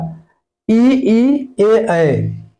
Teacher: जो जीभ होती है उसके आगे का, यानी कि जीभ की आगे का हिस्सा काम करता है।